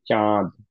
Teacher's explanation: ওকে, নাও আমরা এক্সাম্পল দিচ্ছিলাম যে বাংলায় যখন আমাদের চাঁদ বলি আমরা চন্দ্রবিন্দু দিয়ে, তখন এটা অ্যাকচুয়ালি বলা উচিত চাঁদ না বলে আমরা বলি হচ্ছে চাঁদ। তো এই যে চাঁদ বলার সময় যে এই চয়ের উপরে চন্দ্রবিন্দু থাকার কারণে যে নেজাল ক্যাভিটি দিয়ে কিছু সাউন্ড বের করলাম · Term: গুন্না